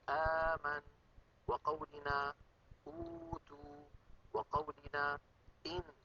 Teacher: بالهمزة المتحركة الأمر معكوس، فإن الوترين الصوتيين يكونان ملتصقان ثم يبتعدان، كقولنا آمن، وقولنا أوتوا، وقولنا إن. فإن هذه الهمزات المتحركات خرجت بتباعد الوترين الصوتيين عن بعضهما بعد أن كانا ملتصقين ومنطبقين